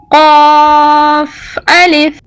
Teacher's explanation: اس گول سرے کے اوپر 2 نقطے ہیں، یہ موٹا پڑھے جانے والا قاف ہے۔ زبان کی جڑ کو تالو سے لگا کر موٹا پڑھیں۔